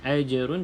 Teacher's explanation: cuma lantunannya sedikit saja sebab Qalqalah Sugra · Ajrun, jim ada jim salah satu qalqalah, jadi maka baca dengan lantunan ajrun, cuma lantunannya sedikit saja sebab qalqalah sughra